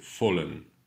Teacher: Fallen, par contre, devant une voyelle, le L se prononce comme en français